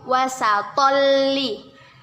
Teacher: Tanwin bertemu dengan huruf lam. Kita masukkan tetapi dengan tidak berdengung, yaitu idgham bila gunnah.